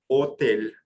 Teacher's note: the way that you say hotel in French is by ignoring the sound of H and just going straight to the word o and the O is deep sound it's a one of those